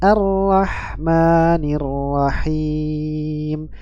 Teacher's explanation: dibaca bukan Al tapi ya dibaca Ar arahma arahma baik masuk huruf ra memiliki sifat bainiah suaranya mengalir pertengahan